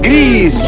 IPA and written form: gɾis (gris)